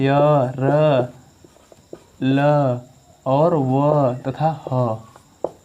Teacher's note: य, र, ल, व और ह बोलने पर हमारे स्वर तंत्र में कंपन हो रहा है, इसलिए इसको बोलेंगे हम सघोष।